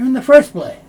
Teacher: Often the T sound isn't made, so you'll hear in the first place.